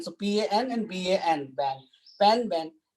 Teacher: pa and ba both are bilabial sounds. Pa and ba both are plosives, but the difference is like one sound is uh, voiceless, another sound is voiced.